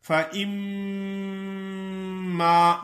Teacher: منہ تو بند ہو جاتا ہے لیکن آواز غنے کی ناک سے نکلتی ہے